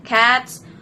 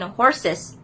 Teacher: the plural plus s has three forms like s in cats, z in dogs, and iz or ez in horses. The choice depends on the final sound, like hissing is I and Z, and voiceless is S, and then voiced is Z or Z. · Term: allomorph